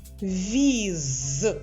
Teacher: наступний малюнок віз вимовляємо дуже повільно щоб все почути з віз Ми чуємо приголосний твердий з в кінці слова